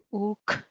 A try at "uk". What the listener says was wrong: Ese sonido es lo que necesito.